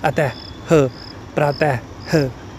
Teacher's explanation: Last में उच्चारण जो है वो ह के समान आता है। जैसे अतः ह, ह आ रहा है ना लास्ट में प्रनाउन, जब भी हम प्रनाउंस कर रहे हैं, जैसे उच्चारण कर रहे हैं, अतः ह, प्रातः ह, लास्ट में ह आता है। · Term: विसर्ग